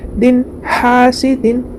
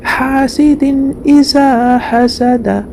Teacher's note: نون کی آواز کو ظاہر کر کے بغیر غنہ کے جلد پڑھیں گے